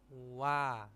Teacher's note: terus a diucapkan atau dilafalkan dengan sedikit panjang nah seperti itu u agak pendek a-nya baru agak panjang